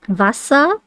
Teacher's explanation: In German, the the German W is more like the English V. It's the V sound.